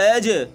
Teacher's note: إِلَّا الَّذِينَ آمَنُوا، إِلَّا الَّذِينَ آمَنُوا وَعَمِلُوا الصَّالِحَاتِ لَهُمْ أَجْرٌ، أَجْ، حمزہ جیم زبر، أج، جیم میں قلقلہ ہوگا اور جماؤ بھی ہوگا